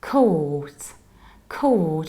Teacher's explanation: Very long O and no R.